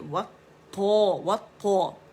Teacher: واو کو موٹا نہیں کریں گے، وطا نہیں کریں گے